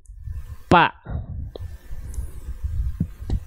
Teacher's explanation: Kalau huruf P yang nempel itu adalah bibir atas dan bibir bawah makanya enggak keluar nafas